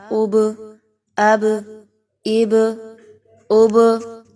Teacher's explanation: قلقلہ کیا ہے کہ آپ نے اس کو ساکن کرتے ہوئے با کو آپ نے ہلا کر پڑھنا ہے، ٹھیک ہے، یعنی کہ آپ نے اس کو جزم لگاتے ہوئے ہلا کر پڑھنا ہے۔